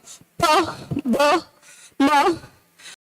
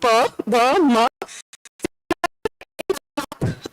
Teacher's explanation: if I bring my lips together, pa, ba, ma, all this, I just use my both lips. I have not used my tongue.